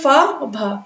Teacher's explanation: और बोलते टाइम मुंह से ज्यादा हवा निकलती है तो उन्हें क्या बोलते हैं? महाप्राण व्यंजन कहते हैं।